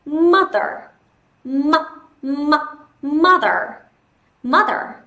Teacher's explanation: Trọng âm rơi vào âm tiết đầu tiên